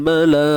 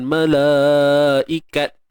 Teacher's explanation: Huruf ta yang tertutup ni tuan-puan, bila kita waqaf, bila kita berhenti, dia memang akan dibunyikan dengan huruf ha. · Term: bunyi ha